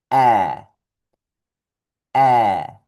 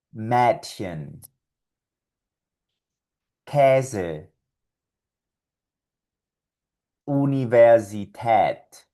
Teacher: esta A umlaut produce el sonido de una forma de A con tu boca, pero un sonido de E con tu tracto vocal